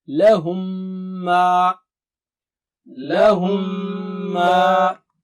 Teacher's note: Ghunna means nasal sound, double stretch.